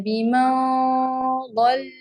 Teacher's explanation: यहाँ पे आपने दौद के मखरिज की तरफ जबान को उठाना है और नाक से गुन्ना अदा करना है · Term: इख्फा